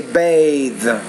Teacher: is shorter when you say bath then you say bathe so the vowel which precedes the voice interdental consonant is going to be longer